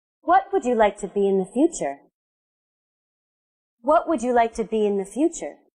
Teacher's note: My voice went down, so this question has a falling intonation.